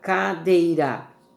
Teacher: Ó, a palavra cadeira, E é a vogal e o I semivogal. Então nós temos aqui um ditongo decrescente oral, o som só pela boca. Não temos aqui nenhum nasal.